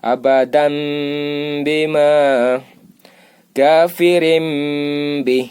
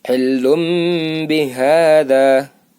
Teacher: Bunyinya berubah jadi mba, mbi, mbu dengan dengung. Dengung itu artinya berarti 3 ketukan atau 1/2 alif.